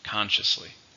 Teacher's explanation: How many syllables are in consciously? 3. Stress on the first.